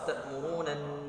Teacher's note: gunnah musyaddadah ya, nun tasydid. Ditahan terlebih dahulu ya gunnahnya 3 harokat